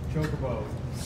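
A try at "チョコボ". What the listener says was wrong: No, there's no T.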